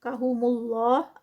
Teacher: اللہ لفظ جلالہ سے پہلے پیش تو یہاں پر ہیوی پڑھا جائے گا اور یہاں پر 4 کاؤنٹس کا کیونکہ آگے اسٹاپ آ گیا ہے تو 4 کاؤنٹس کا اسٹریچ.